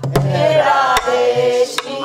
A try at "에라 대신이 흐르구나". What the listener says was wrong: 아 에라가 늘어지면 안 돼 에라 대 한 박자씩 시작 에라 대신이 흐르구나 울군 돌군 놀아가 봅시다